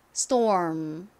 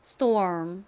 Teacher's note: S 뒤에 T가 와서 이 T는 거의 된소리에 가깝게 세게 발음이 납니다